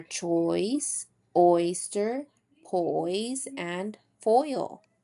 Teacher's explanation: Now oi is created when the lips move from an oval to slightly parted and spread. Oi. Our jaw rises with the tongue and closes and our tongue moves from low in the back here to high in the front over here.